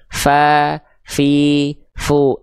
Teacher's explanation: Fa ada nafasnya keluar jangan sampai pa ya. Jadi enggak ada hilang nafasnya. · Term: huruf fa